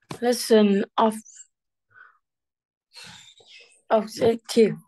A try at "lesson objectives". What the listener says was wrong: Very good. Lesson objectives. Pronounce the S. Go.